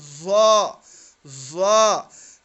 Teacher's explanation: ज़ा और जाल में फ़र्क ये है कि जाल को हम बारीक पढ़ेंगे, ठीक है, और ज़ा को हम मोटा पढ़ेंगे। मोटा कैसे होगा कि ज़बान की जो अंदर वाला हिस्सा है वो ऊपर उठाएं